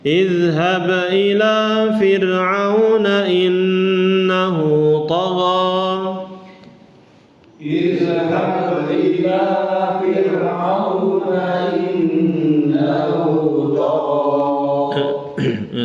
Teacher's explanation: ini ra-nya ini sukun kemudian sebelumnya kasrah Fir'aun, maka di situ tipis ya